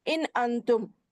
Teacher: ان انتم میں ایک اظہار ہے، پہلے والا نون، دوسرے والا نون اخفا ہے · نون ساکن کے بعد حمزہ آنے کی وجہ سے اس کو اظہار کر کے ظاہر کر کے پڑھیں گے